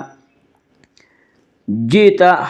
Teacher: جئت حمزے کو یہاں جھٹکے سے پڑھیں گے